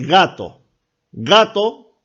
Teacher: se van a dar cuenta que el sonido o la parte que trabaja es el fondo de su garganta